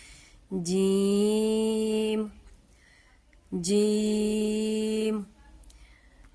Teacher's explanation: اس word کو ادا کرتے وقت ہم آواز اپنے ناک میں نہیں لے کے جائیں گے، ہم دانتوں کو تھوڑا سا کھلا چھوڑ کے پھر پڑھیں گے جیم جیم، یعنی کہ ہم جیم نہیں پڑھیں گے، ہم پڑھیں گے جیم۔